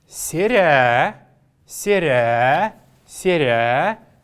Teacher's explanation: Последнюю гласную, как вы знаете, мы должны протягивать.